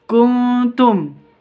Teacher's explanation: Nun bertemu dengan ta samar didengungkan ikhfa